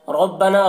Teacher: را کو پر پڑھیں گے، نام الف مدہ ہے، اسے 1 الف کے برابر کھینچ کر پڑھیں گے۔